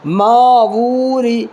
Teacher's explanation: اس را کو باریک پڑھنا ہے، اس لیے کہ را کے نیچے زیر ہے